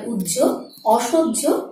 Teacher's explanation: হয়ের সাথে যখন জফলা যুক্ত হবে তখন প্রথমে উচ্চারণটি হবে জয়ের মতো, তারপরে ঝয়ের মতো।